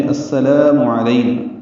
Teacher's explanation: سین صفیر کی آواز سے ادا ہوگا، مشدد اس لیے ہے کہ ادغام شمسی ہو رہا ہے۔